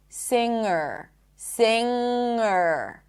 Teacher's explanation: I did not pop the G.